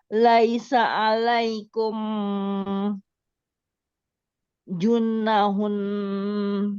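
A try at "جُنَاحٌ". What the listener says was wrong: Junahun. Nanya panjang kan? Junahun.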